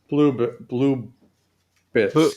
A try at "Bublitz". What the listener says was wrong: Bublitz. Not blue. Boo. It's best if you break it into two. So you say boo, like as a ghost, boo, and then blitz, like football. So boo blitz.